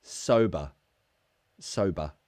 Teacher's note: remember in British English, ER endings to words is the schwa sound. Sober. It's a very lazy sound, so say it with me.